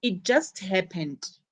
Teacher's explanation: notice the stress on just